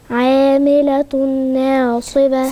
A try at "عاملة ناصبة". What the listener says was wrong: فين الغنة؟ أنا عندي هنا تنوين مضموم على التاء المربوطة ورايا نون، والتنوين ده نون بنطقها هي نون زائدة بتتنطق باللفظ، مش مكتوبة نون، لكن التنوين عادة تن تن تن، احنا بننطق ايه؟ نون. فأنا دلوقتي ورايا نون، هنضغم الاتنين في بعض وهيبقى صوت الغنة واضح عشان يبين ان هنا فيه إضغام. فهنقول عاملة ناصبة.